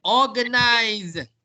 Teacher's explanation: it's pronounced with a Z sound not an S sound so both British and American pronounced with a Z sound so